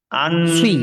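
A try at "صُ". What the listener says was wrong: সুই, সি না, সুই।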